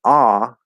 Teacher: the ah uses the back of the tongue okay not the middle or the front and it's going to be more down like that